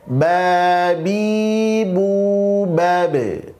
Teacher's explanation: Ba makhrajnya di syafatain, maka cukup dipantulkan cukup di bibir saja. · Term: qalqalah